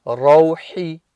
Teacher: Make sure that ha coming crisp from the middle of the throat.